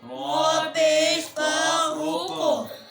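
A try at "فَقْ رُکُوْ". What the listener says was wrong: یہ بھائی سے فا پہ کلکلا کر رہا ہے, فاف نہیں, فف روکو. جی فف روکو.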